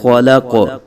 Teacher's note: جب وقف کریں گے تو کاف ساکن ہو جائے گا، تو کاف ساکن حروف قلقلہ میں سے ہے تو قلقلہ خوب ظاہر کریں گے